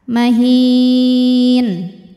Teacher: Mad tabi'inya ya sukun didahului harokat kasrah, kemudian huruf yang disukunkannya nun. Maka hi-nya ini panjang, boleh 2, boleh 4 atau 6 harokat, asal konsisten dalam satu kali bacaan. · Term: mad arid li sukun